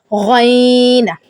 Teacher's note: غین, گلا رگڑ کر ادا کرنا ہے اور موٹا ادا کرنا ہے. اور یہ ادنا حلق سے, یعنی جو منہ کی طرف سے حلق ہے نا ہمارا, جدھر سے زبان کی جڑ ہوتی ہے وہاں سے جو حلق شروع ہوتا ہے, سٹارٹنگ حلق سے آپ نے منہ کی طرف والے حلق سے, ادنا حلق سے آپ نے اسے ادا کرنا ہے.